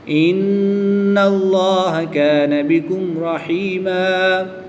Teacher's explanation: میم ساکن کے بعد حرف با اور میم کے علاوہ حرف را ہے تو یہاں پر اظہار شفوی ہوگا، یعنی غنہ نہیں کریں گے بلکہ میم ساکن کو خوب ظاہر کر کے پڑھیں گے